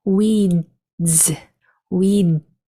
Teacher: turns into a bit of a stop sound so it it's it sounds more like a stop than a full duh it just stops before you make that z sound · ee is going to say e and we also know that that s is going to make its vibrating sound because the D is a vibrating sound so that s is going to sound like a z